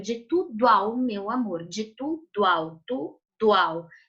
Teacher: Quando a gente pronuncia o verso, eu emendo o O no A, certo?